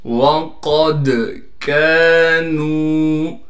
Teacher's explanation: وَقَدْ كَانُوا، قاف کو موٹا کر کے پڑھیں گے اور قاف کو دال سے ملا دیں گے، دال پر ساکن ہونے کی وجہ سے دال پر تھوڑی سی آواز کو ہلائیں گے اس لیے کہ یہ حروف قلقلہ میں سے ہے · کاف کو باریک کر کے پڑھنے کے ساتھ کاف کو ایک الف کی مقدار کھینچیں گے